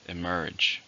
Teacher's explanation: How many syllables in the word emerge? 2, stress on the second.